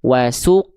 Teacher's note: Jawaban yang satu kurang tepat karena qof sukunnya dibaca terlalu tipis. Wasuq seharusnya wasuqyaha wasuqyaha.